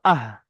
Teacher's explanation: হার মাখরাজটা দেখুন এই গলার শুরু থেকে বার হচ্ছে